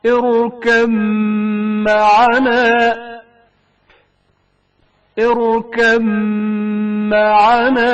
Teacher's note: بائے ساکن کا میم متحرک میں ادغام کا مقام. اركب معنا اركب معنا.